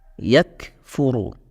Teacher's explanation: huruf kaf punya sifat hames, yaitu keluarnya atau mengalirnya nafas saat mengucapkan huruf atau kita sering bilangnya desis.